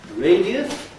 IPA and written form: ˋreɪdiəs (radious)